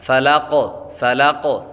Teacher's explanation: قاف ساکن ہو جائے گا، اور قاف حروف قلقلہ میں سے ہے تو خوب ان میں قلقلہ ظاہر ہوگا، جب حروف قلقلہ ساکن ہوں تو ان میں خوب قلقلہ ظاہر ہوگا۔